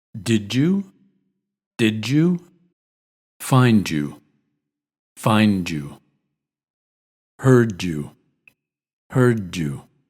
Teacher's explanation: the final D isn't released and the Y is pronounced like J almost like J in judge